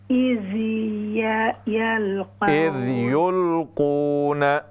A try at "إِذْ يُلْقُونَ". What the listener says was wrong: نا نون کو نون کے زبر کو لمبا نہ کریں إذ يلقون أقلامهم